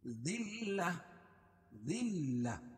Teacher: دال کو لام میں سختی کے ساتھ ملائیں گے کیونکہ لام کے اوپر تشدید ہے اور تشدید والا حرف 2 مرتبہ پڑھا جاتا ہے.